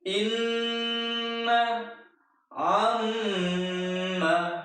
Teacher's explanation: Gunnah adalah nun atau mim yang bertasydid dibaca mendengung.